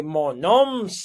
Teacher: So that M is just a little bit of air coming through your nose there. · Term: nasalized